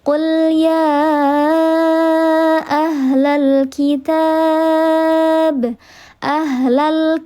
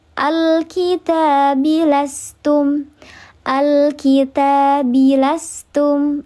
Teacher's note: Hamzah yang mana ketika di tengah kalimat dia tidak dibaca. Sedangkan kalau di awal kalimat dia dibaca. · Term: hamzah wasal